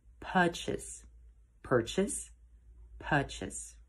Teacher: If you prefer the British pronunciation, then remember to drop the R.